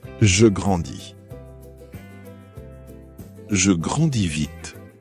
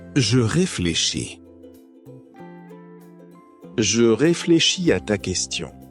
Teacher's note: after adding is to conjugate the verb with je, the final s is usually silent in pronunciation. This makes these IR verbs easier to pronounce and remember.